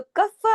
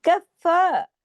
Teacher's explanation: इसको सख्ती से जोड़ना है, क्यों, तशदीद की वजह से , कफ्फा, लेकिन रखना बारीक है, इसको फॉ ऐसे बड़ा नहीं